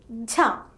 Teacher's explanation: this letter is the aspirated sound of J the release is followed by an extra puff of air